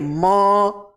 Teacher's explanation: म, नाक से हवा निकल रही है। ये सब कहां पे आ जाएगा, नासिक वर्ण में।